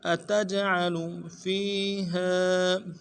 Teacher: جیم جب ساکن ہو تو قلقلہ ہوگا تو قلقلہ کریں گے